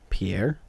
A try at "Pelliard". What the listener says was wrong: No, Pelliard. You said very French. You just pick out like two syllables and just go with that.